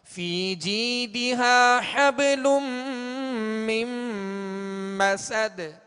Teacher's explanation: لام پر دو پیش کی تنوین ہے، آگے میم حروف یرملون میں سے ہے لہذا یہاں ادغام کا غنہ ہوگا